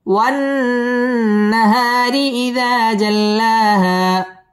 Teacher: ওয়ান ওয়াজিব গুন্না, নাহা মদ্দে তাবাঈ এক আলিফ টেনে পড়তে হবে। ওয়ান নাহারি র বারিক হবে